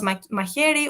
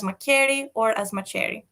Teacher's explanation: somebody who produces, instead of hu, produces k in its position, or a ch sound